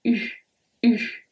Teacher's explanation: That comes from the back of the mouth, your throat, and it's a very, very low sound. It's not like oo, oo.